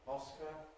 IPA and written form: ˈɒskə (Oscar)